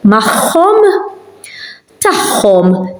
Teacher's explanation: when you have an ein and akka near each other, those pronounce as a h, because they are near each other.